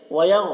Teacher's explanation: غین کو پر پڑھیں گے، غین حرف مستعلیہ میں سے ہے،